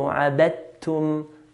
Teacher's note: No dal here, dal should be silent here. Why? Because dal and ta, they come from the same articulation point.